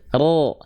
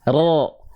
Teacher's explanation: Ro, enggak, bibir kita, mulut kita cuman buka mulut saja. Dan diangkat pangkal lidahnya.